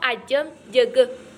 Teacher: huruf J merupakan bunyi kontoid afrikat lomino alveolas, bersuara dan tidak beraspirasi